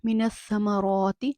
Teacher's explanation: کھڑی زبر بمثل الف مدہ مد اصلی، اس کو 1 الف کے برابر کھینچ کے پڑھیں گے۔